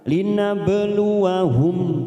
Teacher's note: huruf ba sukun qalqalah sugro kita pantulkan